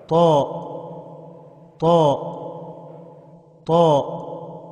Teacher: سرہ زبان اوپر کے سامنے والے دانتوں کی جڑ سے طا ادا ہوتا ہے